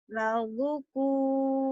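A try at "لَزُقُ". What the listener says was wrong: Zu-nya panjang. Ladzuqu.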